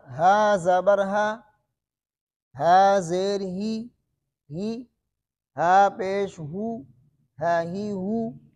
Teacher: ہا باریک ہے، ہا کو موٹا، زیر اور پیش کو موٹا نہیں کرنے